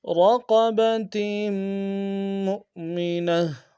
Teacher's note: را کو موٹا ادا کریں گے، قاف کو موٹا ادا کریں گے